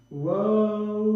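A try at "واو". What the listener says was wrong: Alors là, il ne faut pas trop allonger pour la suite, tu fais 2 temps.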